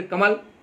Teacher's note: सब बोलते कमल, ल को हलंत कर देते हैं।